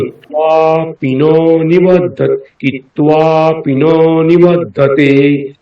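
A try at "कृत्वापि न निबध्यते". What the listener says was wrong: এই যে ন বলে অনেকক্ষণ সময় নিচ্ছেন সেটা নয়। হ্যাঁ, কৃত্বাপি ন নিবধ্যতে, পি ন নি এই তিনটে একসঙ্গে, পি ন নি। এই যে পি ন নিবধ্যতে নকারের সময় নিচ্ছেন সেটা নেবেন।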